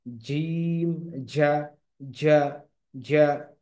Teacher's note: জিম এবং শিন এই দুইটা হচ্ছে জিহ্বার মধ্যভাগ তালুর সাথে লেগে উচ্চারিত হবে, জিম, শিন, ইয়া।